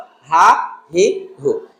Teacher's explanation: কণ্ঠনালীর নিম্নভাগ থেকে সহজ করে সেটা হলো হা, হি, হু